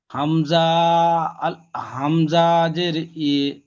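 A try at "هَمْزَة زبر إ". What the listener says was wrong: হামজা টান হয়ে যাচ্ছে। হামজাজের ই হবে, বুঝতে হামজাজের ইয়ে হয় না, হামজাজের ই।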